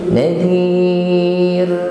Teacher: Maka kita baca ra ini dengan takrir, dengan getaran yang tipis.